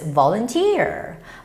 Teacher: the stress goes on the third syllable, so it's volunteer.